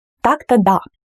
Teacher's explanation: The word да is more stressed here.